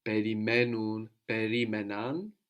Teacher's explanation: the accent moves back from perimenun, perimenan. But when we have two syllables, when we're adding two syllables on the end, then we don't need to move the accent.